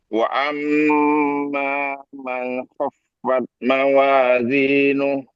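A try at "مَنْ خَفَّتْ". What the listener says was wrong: Man khaffat. Ya, tapi saya belum dengar itu Ustaz. Fat, fat, fat, at.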